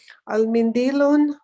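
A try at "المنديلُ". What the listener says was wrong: So al-mindilo, whenever there's alif lam with a noun, it never comes with a tanween. It comes with only one dhamma. Al-mindilo.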